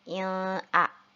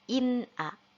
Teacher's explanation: Jadi tidak kita baca il-a, tetapi kita baca jelas nunnya in-a, karena merupakan hukumnya adalah izhar halki.